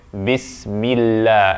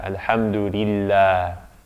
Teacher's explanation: Because there's a kasra before that, there's an I before it. And so therefore the emphaticness goes away.